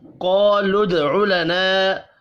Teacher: دال ساکن پر قلقلہ کرنا ہے